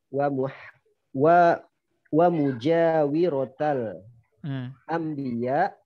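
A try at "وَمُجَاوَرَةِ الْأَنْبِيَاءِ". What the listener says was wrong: mujawi, tapi mujawa. Dia masdar dari jawara yujawiru mujawaratan. Fa'ala yufa'ilu mufa'alatan. Berarti mujawaratun. Nah, mudhaf ilaih.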